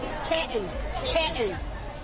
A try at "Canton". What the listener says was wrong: There's no middle N. Canton.